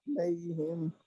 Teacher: زبان بھی پیچھے میری موو ہوئی آئین کے لیے